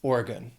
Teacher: That last syllable sounds like gun because it's unstressed, so it's just Oregon.